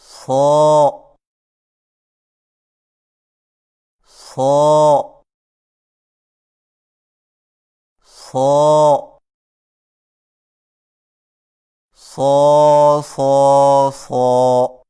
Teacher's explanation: صاد کو ادا کرتے وقت شروع والی آواز کو باریک نہ کریں، مثلا سو سو سو، یہ غلط طریقہ ہے، صحیح طریقے کے ساتھ مشق کیجیے۔